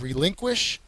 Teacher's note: the second syllable is the accented one